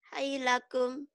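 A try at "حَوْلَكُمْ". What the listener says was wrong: Hai, bukan hai mah. Hau.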